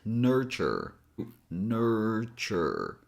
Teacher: T here doesn't have that typical T sound as in my name. It has a different sound. It has a ch sound as in check.